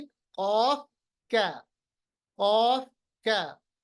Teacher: क़ाफ को मोटा पढ़ेंगे, क़ाफ पे जज्म होगा तो कलकला करेंगे, कैफ को पतला पढ़ेंगे